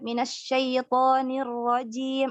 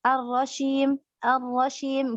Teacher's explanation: Harusnya kalau ketika ar-rajim dia sifatnya adalah jahar dan syiddah dan enggak ada tafasyinya gitu.